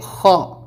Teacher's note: خا کو حلق سے نکالنا ہے، حلق کے جو شروع والے حصے سے